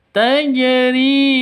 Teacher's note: Tajri ri panjang dua ketukan karena ada ya mati diawali dengan kasroh.